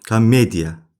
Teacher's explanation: Komediya bax vurğu düşür e satinə. E satinə vurğu düşür. Deməli o satına vurğu düşmür deyə a kimi tələffüz olunur. · vurğu düşür e saitinə